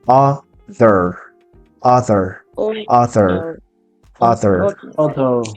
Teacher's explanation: No empiecen con el sonido de la A, empiecen con un sonido similar a una O.